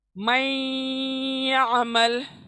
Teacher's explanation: جب بھی نون ساکن آیا یا نون تنوین آیا اور اس کے بعد یا شد آیا، شد یعنی تسجید جس کے پر ہوتی ہے، شد، تو عربک میں ہم اس کو شد کہتے ہیں. تو نون ساکن یا تنوین کے بعد یا شد آیا تو نون ساکن کی آواز کو ہم یا میں ادغام کر دیں گے. ادغام یعنی پہلے ہی بتا چکی ہوں میں، ملا دیں گے. · اور گننا کیسے کریں گے؟ ناک میں نون کی آواز کو لے کے جائیں گے